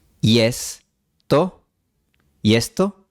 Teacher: el fonema I se realiza con la semivocal Y. El producto es el diptongo IE.